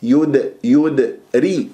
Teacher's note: يدري راء مراققه لانها مكسوره